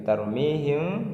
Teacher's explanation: dibaca samar serta dengung ditahan selama satu Alif dan caranya bibir kita agak direnggangkan sedikit jangan terlalu rapat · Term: Ikhfa Syafawi